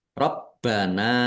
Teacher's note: baknya dibaca double, ada tasdidnya, ditekan dan ditahan biar tampak double.